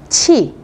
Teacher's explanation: đây là chờ bật hơi cho nên các bạn là sẽ đọc bật hơi một chút